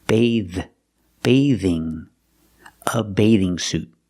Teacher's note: the th makes a voiced sound like in this and that